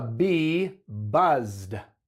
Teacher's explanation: la z es una consonante Sonora entonces Ed suena como una d